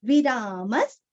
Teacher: म के आगे विसर्ग का उच्चारण आधा स